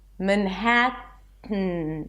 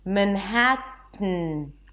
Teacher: So I bring the tongue up, block the air in the mouth, but instead of releasing it here, I block the air with my tongue and I release it through the nose. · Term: nasal T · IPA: mənˈhætən